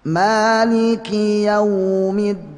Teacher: Dal itu makhrajnya sama dengan ta dan to ya, ujung lidah bertemu dengan pangkal gigi seri atas atau gusi atas bisa ya.